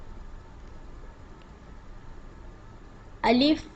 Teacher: الف منہ کے خالی حصہ سے ادا ہوتا ہے